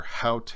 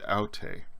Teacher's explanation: there's an extra sound at the beginning of haute, that H sound from the rough breathing, and aute starts just with the vowel sounds.